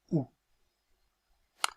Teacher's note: vous voyez sur le schéma ici le passage est très étroit c'est une voyelle arrondie c'est-à-dire que les lèvres sont arrondies pour prononcer le phonemme ou